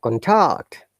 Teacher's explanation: when you stress on the second part that is lower to higher intonation like contact like my hand is going up contact my hand